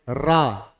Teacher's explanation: रा बोलेंगे रा कंपन हो रहा है। क्या? पूरे मुंह में मुख में कंपन हो रहा है जीभ के द्वारा तो प्रकंपित हो रही है। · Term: प्रकंपित वर्ण